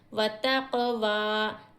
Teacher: वाव के ऊपर हरकत खड़ा ज़बर है, खड़ा ज़बर को हम एक अलिफ की मकदार खींचेंगे